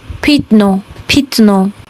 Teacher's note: When the ya is unstressed, it changes to e.